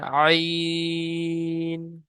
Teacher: আইন তিন আলিফ টান দিয়ে পড়বেন। কারণ তিন লেখা রয়েছে।